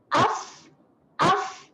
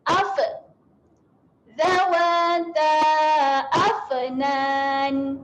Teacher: Kembalikan kepada makhrajnya hujung gigi atas berjumpa dengan bibir bawah. Af. Dan dia ada keluar angin sedikit. Kalau ambil tangan letak depan mulut, dia ada keluar angin lah. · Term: sifat berangin